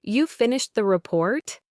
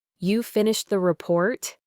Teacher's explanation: her voice stayed flat and went down at the end as if she were just stating a fact · With a clear rising intonation, it would have immediately shown that it was a question, an inquiry, and avoided that short, awkward moment of not understanding.